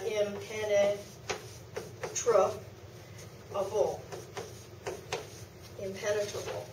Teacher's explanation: The in changes to im because it's followed by a consonant that's pronounced with the lips.